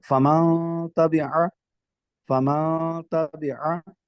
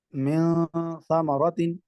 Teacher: نون کو چھپائیں گے بھی اور اس کے ساتھ ساتھ غنہ بھی کریں گے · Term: اخفا